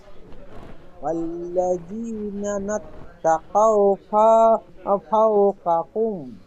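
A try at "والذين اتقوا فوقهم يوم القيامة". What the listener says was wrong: না না, হয়নি, দেখেন ওয়াল্লাযিনা, না ডবল উচ্চারণ হয়ে যাচ্ছে একটু, দেখেন নুন তা যাবার নাত, তা কও যাবার তা, তা যাবার তা নাত, তা কফ হাও যাবার কও, নুন তা যাবার নাত, তা কফ তা যাবার তা নাত, তা কফ হাও যাবার কও, নাত তা কও।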